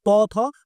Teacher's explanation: জিভ দাঁতে এসে ধাক্কা লাগছে।